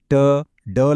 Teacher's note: ట, డ లాంటి శబ్దాలు పలకాలంటే నాలుకని కొంచెం వెనక్కి మడిచి నోటి పైభాగాన్ని టచ్ చేయాలి. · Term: రెట్రోఫ్లెక్స్ సౌండ్స్